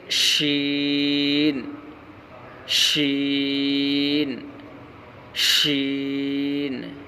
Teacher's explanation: شین کا مخرج زبان کا بیچ اور اوپر کا تالو